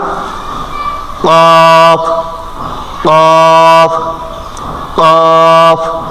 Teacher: কফ উচ্চারণ হবে আমাদের জিহ্বার একেবারে গোড়া, জিহ্বার গোড়াটা যেখানে থাকে ঠিক ওখান থেকে উপরে উঠাইয়া, কফ কফ কফ। একটু ধাক্কা অনুযায়ী একটু ট্রাই করেন, কফ।